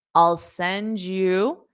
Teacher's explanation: Notice again because we have a d and a y. D Y creates the sound J just like the colors red and white create pink.